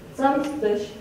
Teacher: the stressed syllable is the first one